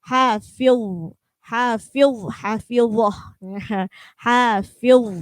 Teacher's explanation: hafiz itu adalah akhirannya huruf dha, maka harus tebal.